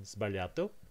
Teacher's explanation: Italian would allow the S and the B in sbagliato